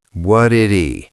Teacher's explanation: The T becomes a D, a flap T, and the H disappears.